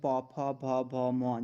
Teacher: जब आप इनको उच्चारण करोगे तो आपके ओंठ आपस में मिलेंगे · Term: पौ वर्ग